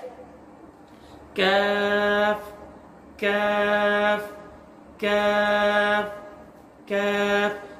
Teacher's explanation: ये जुबान की जड़ और सख्त तालू से लगने के बाद इसकी अदायगी होती है